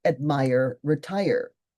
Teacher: Okay, this needs to be distinguished from a rhyme like admire, retire, since the final symbol, even though it's a two-syllable word, the final syllable is stressed. So this is a type of masculine rhyme.